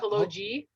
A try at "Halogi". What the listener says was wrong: hello. Wait, no, it's gi. It's a soft G. It's a soft G. Halogi, as opposed as opposed to Hello G.